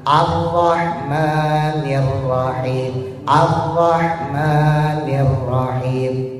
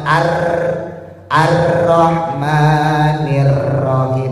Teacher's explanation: Ro itu punya sifat namanya takrir, getaran yang tidak lebih dari dua.